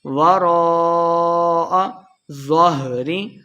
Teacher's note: وراء را کے اوپر مد ہے تو یہاں پہ ہم نے لمبا کرنا ہے. وراء ظہری ظا کو ہم نے موٹا پڑھنا ہے، آخر پہ ہم نے وقف کر دینا ہے، ہا کی آواز آئے گی.